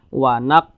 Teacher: Huruf qalqalah itu ada 5, salah satunya huruf qaf. Kalau dia sukun maka dipantulkan. Maka ini dipantulkan.